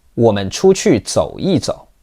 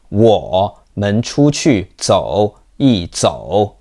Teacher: most of the time we will make a glottal stop in front of the rising bit